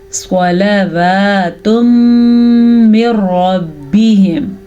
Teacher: تنوین کے بعد ہمارے پاس یمون میں سے میم آیا ہوا ہے تو ہم یہاں پہ غنے کے ساتھ ان دونوں کو آپس میں ملا دیں گے.